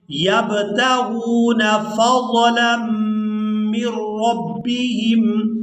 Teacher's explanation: یہاں با پر قلقلہ کریں گے، یبتغون فضلا من ربهم، میم کو را مشدد کے ساتھ ملائیں گے، نون ساکن کو چھوڑ دیں گے، را کو ہم نے یہاں پر پورا ادا کرنا ہے، مر ربہم، مر ربہم نہیں، اس کو پڑھیں گے مر ربہم، فضلا من ربہم ورضوانا۔